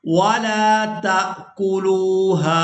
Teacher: تا کو حمزہ ساکن کے ساتھ ملائیں گے تو جھٹکے کے ساتھ ادا کریں گے